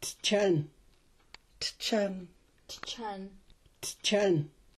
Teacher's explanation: these four sounds are produced with the tip of the tongue against the area above the gum behind the upper teeth